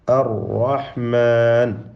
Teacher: പറഞ്ഞു എന്ന് പറയുകയുണ്ടായി ശദ്് നൽകപ്പെടുമ്പോൾ നീ തക്രീറിനെ ഇഫാ ചെയ്യണം ഗോയമാക്കണം അപ്പോ അറഹ്മാൻ എന്ന ഒറ്ററാ ഉച്ചരിക്കുമ്പോൾ തന്നെ നാവിന്റെ അറ്റം അവിടെ മഹ്റജിൽ ചെറിയ ഒരു ഇളക്കം സംഭവിച്ചുകൊണ്ടാണ് ഒരു റാിനെ തന്നെ നമ്മൾ ഉച്ചരിക്കുന്നത് അത് ആ റായിൽ ഉള്ളതായ തക്രീറാണ് തക്രീർ എന്ന അതിന്റെ സിഫത്താണ് ഇർത്തി എന്ന